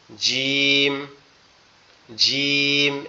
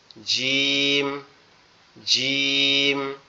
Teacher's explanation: আমাদের দুই দাঁতের পাটি একসাথে শক্তভাবে লাগবে, লেগে একটু কড়া আওয়াজে উচ্চারিত হবে